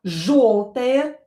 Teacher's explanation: Yo is always stressed in the word, so this o will be reduced. It will be pronounced as a because it's not stressed.